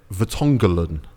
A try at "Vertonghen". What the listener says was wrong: Jose and Vertonghen. No. Vertonghen, he just added an L.